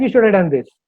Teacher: Like should have become shoulda